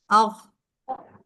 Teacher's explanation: आह अख में जरा खा की आवाज में थोड़ी खरखराहट की आवाज आती है गले से, जो कि गाइन में नहीं होती